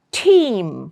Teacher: Now the nasal tone will be on M not on T.